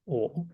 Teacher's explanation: 좀 더 열면서 발음하면 돼요 개모음 이니까